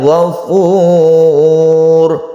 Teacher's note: karena sebelumnya ada Doma maka dibaca tebal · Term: tafkhim